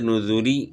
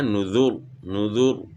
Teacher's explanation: نذوری میں وصل کی صورت میں باریک پڑھی جائے گی لیکن وقف کی صورت میں پر پڑھی جائے گی